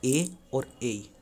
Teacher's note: कंठ तालु, कंठ तालु में होता है ए और ए